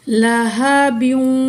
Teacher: यहाँ इदगाम हो रहा है, ठीक है, क्योंकि तनवीन के बाद हरुफ़ मलून में से वाव आ रही है